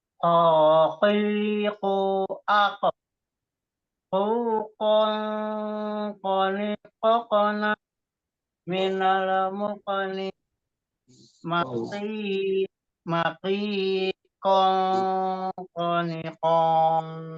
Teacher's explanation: Isti'la itu suaranya itu tebal atau berat karena terangkatnya anak lidah atau pangkal lidah ke langit-langit atas.